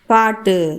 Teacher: பாட்டு கடைசியில் இருக்கக்கூடிய இந்த டூ வந்து சுருங்கி ஒலிக்கிறது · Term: குற்றியல் உகரம், குற்றிய லுகரம்